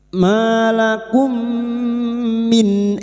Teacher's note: mim sukun bertemu mim, idgham mimi, memasukkan atau mentasydidkan dua mim masuk pada huruf mim berikutnya disertai mendengung selama 3 harakat